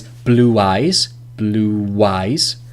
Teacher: blue ooh is more of a round vowel